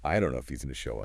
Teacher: And if he is going to reduces to if he's gonna.